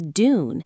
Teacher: In careful or posh RP, the yes sound, what linguists call the yode, is kept after certain consonants. So tune is tune and dune is dune and the t or duh, remains almost unchanged.